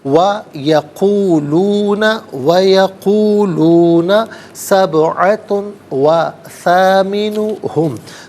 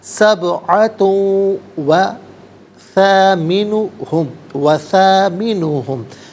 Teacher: تا پر دو پیش کی تنوین، اسے واو کے ساتھ ملائیں گے، واو کی آواز کو ادا کیا جائے گا۔ یہاں پر یرملون کا قاعدہ اپلائی ہوگا۔